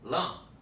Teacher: Observem que parte do ar, em português, sai pela boca, parte pelo nariz. Se eu interromper, lã, eu proibi a passagem do ar pelo nariz. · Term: nasalização